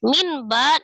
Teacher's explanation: disertai dengan ghunah min ba nun sukun ketemu dengan huruf ba hukumnya iqlab merubah nun sukun menjadi mim sukun disertai dengan dengung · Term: iklab